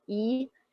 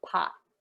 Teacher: tea would be way up in the top corner of my mouth, E, and pot would be at the very bottom